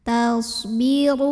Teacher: Tapi ini dengungnya sedikit aja karena huruf ta ini makhrajnya masih dekat dengan nun. Huruf shad punya sifat yang tidak memiliki lawan, namanya sifat sofir ya. Jadi ada suara desisan seperti suara angsa. Tasbiru. Huruf ro dibunyikan secara tafkhim karena ro-nya berbaris dhammah.